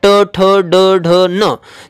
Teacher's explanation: ज्या ठिकाणी चिंच आपण चघळतो त्या ठिकाणी जिभेचा जर स्पर्श होत असेल तर त्याला मूर्धन्य व्यंजन असं म्हणतात